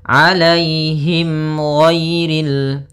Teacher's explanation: ada mim mati bertemu dengan huruf ghain. Maka dinamakan dengan izhar syafawi. Maka harus jelas suara mimnya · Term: idhar syafawi